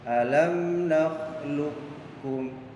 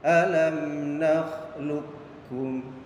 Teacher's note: Jadi cara bacanya qafnya tidak dibaca qalqalah, jadi tidak dipantulkan. Jadi suara huruf qaf itu dimasukkan kepada huruf kaf. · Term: idgham mutaqaribain